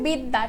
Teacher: ওকে দেখো বিদ্যা লাস্টে যখন আমাদের জফলা রয়েছে তখন আমাদের এই জফলার কারণে দর উচ্চারণটা আমরা করছি দুইবার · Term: দ্বিত্ব